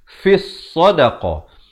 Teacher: Yang ni lam tidak dibunyikan. Jangan baca fil sadaqah, tapi masuk terus di atas sad yang bersabdu. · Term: alif lam syamsiyah